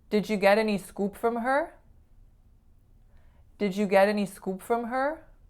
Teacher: for this one I was attempting to say a pure u vowel